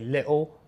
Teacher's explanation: the dropping the T thing is the glottal stop